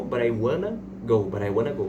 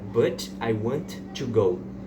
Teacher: Só que eu transformo esse T num som de R. Em vez de eu falar but I, eu falo bran. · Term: connected speech